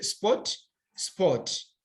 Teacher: For example, you can say sp or t, sport. But when we are speaking English, we don't sound that sound R.